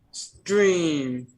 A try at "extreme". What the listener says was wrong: Don't forget your M. All right. So remember, you don't let the K out. You roll it. You glide it into the S. You let the K out. You went extreme. Don't let the I'm talking. I don't want to hear the k. Okay, it's not extreme. All right, it's you have to cut the air off right here.